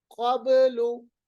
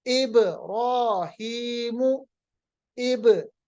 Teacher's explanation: आवाज को वापस लाएंगे अपने मखरज से, इसको हम कलकला कहते हैं। ये 5 हुरूफ में होती है जब ये हुरूफ साकिन होते हैं।